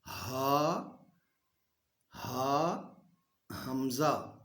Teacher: تو اس کے لیے ایک تو یہ ہے کہ ہمارے جو حلق سے الفاظ ادا ہوں گے نا، حلق سے، ان میں حمزہ، ہا، یہ دو لفظ جو ہے، دو حروف، یہ ایک ہی مخرج سے ادا ہوں گے، یعنی اقصائے حلق کا آخری حصہ جو ہمارے سینے کے قریب ہے، وہاں سے ادا ہوں گے